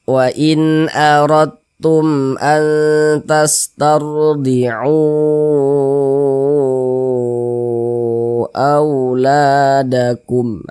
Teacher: Maka dia namanya berubah menjadi mad jaiz munfasil. Panjangnya itu 4 hingga 5 harokat.